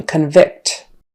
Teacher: has the stress on the first syllable as in convict and the verb often has a stress on the second syllable as in convict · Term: syllable stress